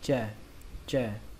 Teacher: âm chờ nhưng mà âm chờ rung thôi, nó không bắn hơi